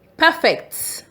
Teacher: When the stress is on P-E-R, the word is pronounced perfect.